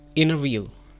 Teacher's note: Skip the T sound and say inner view.